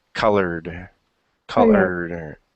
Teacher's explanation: remember that R is not going to make a rolling sound at all. It's just word.